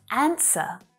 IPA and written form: 'ænsə (ANSWER)